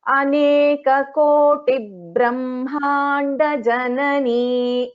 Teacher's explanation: between this Koti and Brahmanda, so that one small doubling of B will happen